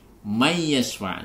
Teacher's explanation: Ingat, may yashfa', ini nun sukun bertemu dengan ya seperti sebelumnya, maka di sini dibaca idgham bi gunnah, yaitu idgham masukkan, apa yang dimasukkan? Nun sukun, nunnya ini ke dalam huruf ya disertai dengan dengung.